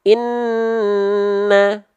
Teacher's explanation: kalau Nun dan mim dia tidak ditekan tapi dia ditahan dengan kadar dua harakat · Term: gunah